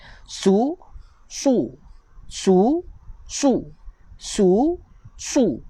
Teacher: Sad baris depan bunyi dia su. Tebal. Lidah terangkat sikit.